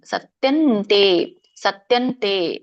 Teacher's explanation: ಸತ್ಯಂ ಇಲ್ಲಿ ಅನುನಾಸಿಕ ಇದೆ ತಥ ದನ ಇಲ್ಲಿ ಕೂಡ ಅನುನಾಸಿಕ ನ ಬರುತ್ತೆ